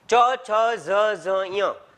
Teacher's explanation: આ તાલુ સ્થાન છે, ત્યાં તમારો જીભનો આગળનો ભાગ છે એ સ્પર્શ કરશે